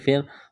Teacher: را ساکن سے پہلے زیر ہے تو را کو باریک کرنا ہے